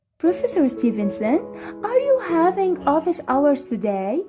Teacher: i am using rising intonation but it is not at a very high patch i use